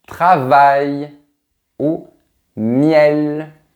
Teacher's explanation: Voilà la représentation de la première semi-voyelle. Elle est identique au son i mais prononcé très rapidement.